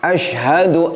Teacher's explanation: nun sukun bertemu dengan lam, kita baca dengan agak cepat, ditekan nun sukunnya langsung dileburkan ke huruf lam. Kekeliruannya adalah seperti ini, kita menahan bunyi nun sukunnya sehingga akhirnya muncul bunyi dengungnya. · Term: idgham bila hunnah